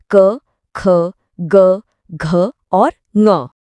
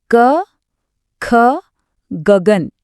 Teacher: तो जिन वर्णों की आवाज सीधे गले से आती है वो कंठ्य हैं। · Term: कंठ्य वर्ण